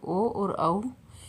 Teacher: ओ और औ ये वर्ण कंठोष्ठ से बोले जाते हैं, तो इन्हें कंठोष्ठ वर्ण कहा जाता है